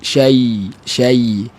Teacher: daripada makhraj dia tengah lidah ni kita rapat dengan dekat dengan langit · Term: ya mati